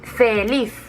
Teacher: ¿dónde lleva el golpe de voz? Feliz, en la última. Por lo tanto, es aguda.